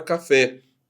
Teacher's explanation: A palavra café, ela tem sílaba tônica também no fé.